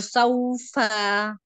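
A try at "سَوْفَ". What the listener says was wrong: फा को क्यों लंबा किया आपने, जबर को कितने काउंट।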